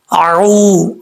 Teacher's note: واؤ مدہ ہے، ایک الف کی مقدار، اس کو لمبا کریں گے